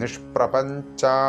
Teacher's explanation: ഞാ ജായ് അല്ല, ഇവിടെ ഞാ ചായാണ്. ഞാ പ്ലസ് ചായാണ്.